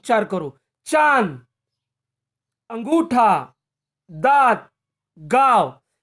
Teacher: चंद्र बिंदु के शब्दों का उच्चारण करते समय हवा नाक और मुंह से निकलती है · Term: अनुनासिक